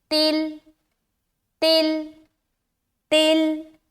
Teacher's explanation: تو تا کو بالکل آسانی سے ملائیں گے، تل۔ دیکھیے لام سے ملتے ہوئے ہماری آواز بالکل اسٹاپ ہو جا رہی ہے